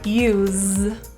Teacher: this has an Essence spelling but pronounced as a zed so feel the voice go on